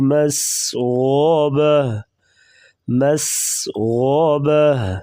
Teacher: غین کو موٹا پڑھیں گے اور ہا وقفاً ساکن ہوگی